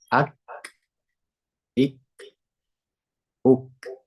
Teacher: kalau misalnya disertai dengan sifat Hames ak Ik UK Nah ada percikan nafas sedikit